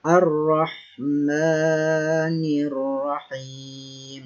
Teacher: Ra tafkhim, yaitu ra yang berharokat fathah, yaitu ra dibaca secara tebal.